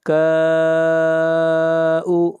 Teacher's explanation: مد متصل ہے اور اس مد کی مقدار تین الف ہے۔ مد متصل وہ ہوتی ہے جہاں پر حروف مدہ کے بعد حمزہ اسی کلمہ میں ہو۔